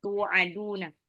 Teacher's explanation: Tu'aduna. Nah, panjang pada domah bertemu dengan waw sukun